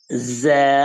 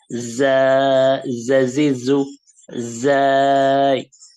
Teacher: 2 দাঁত একসাথে লাগিয়ে জিভটাকে নিচের, আমাদের নিচের দাঁতের পজিশনে রেখে যা, একটু জিজি আওয়াজ হবে, শক্ত এরকম আওয়াজ হবে যা, জাজিজু যাই।